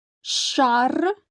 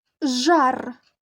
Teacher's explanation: звук ш глухий А звук Ж дзвінкий